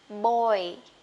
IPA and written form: bɔɪ (boy)